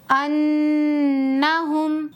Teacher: نون پر تشدید ہے تو غنہ کر کے پڑھیں گے